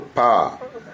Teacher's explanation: ಪ ಎಂಬತಕ್ಕಂಥದ್ದು ಎರಡು ತುಟಿಗಳನ್ನ ಸ್ಪರ್ಶ ಮಾಡಿದಾಗ ಬರುತ್ತೆ. · ವಿವಾರ, ಸ್ಪರ್ಶ ಮತ್ತು ಇದು ಅಲ್ಪ ಪ್ರಾಣವಾದದ್ದು ಪ ಎಂಬತಕ್ಕಂಥದ್ದು. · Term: ಸ್ಪರ್ಶವರ್ಣ